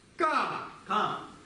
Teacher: Мы начинаем чуть-чуть ниже, заканчиваем чуть-чуть выше. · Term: восходящий тон